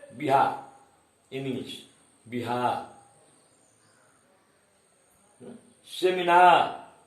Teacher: जिस शब्द के अंत में आर आता है उनका उच्चारण करते समय हम आर को साइलेंट कर देते हैं